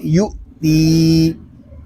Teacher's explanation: یہاں حمزہ ساکن میں جھٹکا ہوگا اور تا کو ہم ایک الف تک کھینچ کر پڑھیں گے کیونکہ یہاں پہ یا مدہ ہو رہا ہے، اس کو پڑھیں